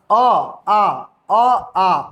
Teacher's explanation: अ आ का जो उच्चारण होता है ना वो अंदर से होता है। कंठ से होता है। अ आ एकदम डायरेक्ट कंठ कंठ से हवा निकलता है और बाहर निकल जाता है।